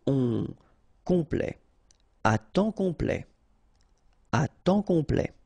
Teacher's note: And then OM is nasal here, just because you get your P after that.